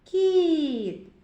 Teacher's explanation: перший звук кі м'який тому що звук і пом'якшує звуки що стоять перед ним кіт другий звук і голосний кіт твердий приголосний ти позначимо